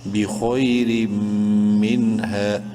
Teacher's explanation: نون ساکن کے بعد ہا حروف حلقی میں سے ہے، اس نون میں اظہار کریں گے